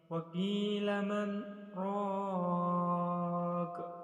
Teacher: Saktah yaitu kita berhenti sejenak dan di dalam berhenti tersebut kita tidak boleh mengambil nafas dan langsung dilanjutkan ke bacaan selanjutnya.